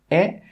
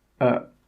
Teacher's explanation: think about where is the sound coming from in my mouth is it coming from the front as in it or is it coming from the middle as in uh